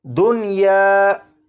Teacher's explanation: होना तो ये चाहिए था कि नून साकिन को या में इदगाम करके पढ़ते, लेकिन इस लफ्ज़ में नून साकिन को या में इदगाम नहीं करेंगे बल्कि यहाँ पर नून साकिन को ज़ाहिर करके पढ़ेंगे और इस लफ्ज़ को पढ़ा जाएगा दुनिया।